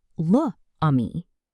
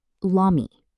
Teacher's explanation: French avoids this by removing the vowel from the article. This process is called elision.